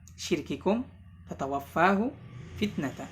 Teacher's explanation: diperjelas pengucapan sifat syiddah pada huruf kaf dan ta ya, jangan sampai didominasi oleh sifat hams